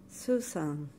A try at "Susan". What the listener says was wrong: You're saying an S here.